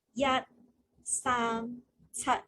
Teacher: We are trying the first tone, which is the high tone.